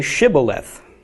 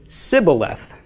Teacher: the Ephraimites did not pronounce the SH sound.